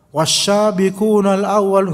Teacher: Berlebihan dalam makhraj. Semua sin ditebelin jadi sya. Wasyabiqunal awwal, enggak bisa, enggak boleh. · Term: takalluf dalam makhraj